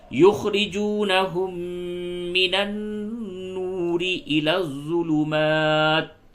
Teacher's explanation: میم پہ تشدید ہے اور نون پہ تشدید ہے، دونوں جگہ پہ غنہ کریں گے اور را کو باریک پڑھیں گے